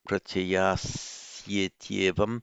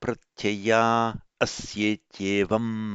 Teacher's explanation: All you do there is to drop the visarga. So pratyayaha asya becomes pratyaya asya, and you have the vowel hiatus.